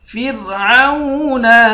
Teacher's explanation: پر کھڑا زبر ہے، ایک الف کی مقدار کھینچیں گے، فرعون، فا کے بعد را ہے، را ساکن ہے، اس را کو باریک پڑھیں گے